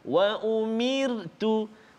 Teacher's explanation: Ra yang sukun ataupun ra yang baris mati sebelum dia baris bawah kasrah, maka kita baca tarqiq ra itu